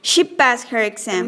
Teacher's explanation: High rise. Speaker is asking for repetition or clarification.